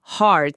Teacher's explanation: a pronúncia de heart exige aquele A aberto lá do fundo, heart. Se a pessoa disser com um som mais fechado puxando pro U, vira hurt, hurt, que significa dor ou machucado.